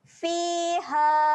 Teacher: Ha dekat sini kita akan baca dia dengan panjang sebanyak 4 harakat.